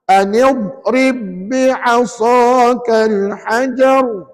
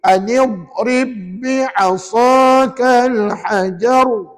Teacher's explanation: Anid tak boleh melantun, rib pun tak boleh melantun. Ya. Yang mula-mula anid tu tak boleh melantun sebab dhad bukan huruf qalqalah.